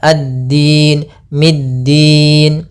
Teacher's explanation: makhraj huruf dal, yaitu ujung lidah kita menempel dengan apa batasan akhir dari gigi sari atas dan gusi atas.